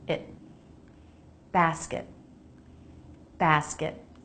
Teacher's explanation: The unstressed syllable has a very quick I vowel.